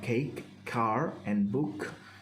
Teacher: k is made with the vocal folds not vibrating with the tongue raising to detach the velum as the air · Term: consonant k